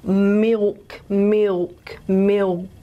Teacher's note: many speakers including me in syllable coda position is the tongue we lose the tongue tip and we're left with that velar gesture